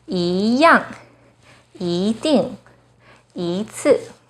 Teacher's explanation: When 一 is followed by a fourth tone, it changes to the second tone.